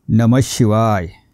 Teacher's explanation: विसर्गाच्या पुढे श आला तर श चा उच्चार अर्धा करायचा आहे